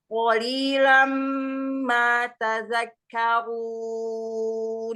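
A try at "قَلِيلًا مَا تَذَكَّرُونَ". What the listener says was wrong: Iya, tadzadzanya ya. Qalilam ma tadzakkarun. Kafnya ada tasydid di situ. Tadzakkarun.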